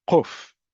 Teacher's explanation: if you come from communities particularly in the Middle East you would pronounce it as kof much farther back in the throat